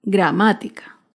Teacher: Gramática se acentúa en la antepenúltima sílaba. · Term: palabra esdrújula, esdrújulas